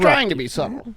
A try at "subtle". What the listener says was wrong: You even pronounce the B in subtle sometimes.